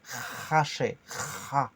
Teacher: Et le khour, le KH ou le 5 qui crie en vert, c'est le R raclé au fond de la gorge, comme le mot cracher.